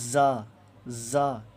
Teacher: جھنجھناہٹ کے ساتھ زا کو پڑھتے ہیں